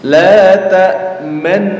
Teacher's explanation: namanya ismam itu adalah memunyungkan bibir di tengah-tengah dengung